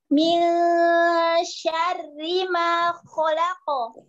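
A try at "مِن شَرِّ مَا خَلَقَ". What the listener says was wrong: Enggak monyong khalaq, enggak. Buka tetap. Khalaqo.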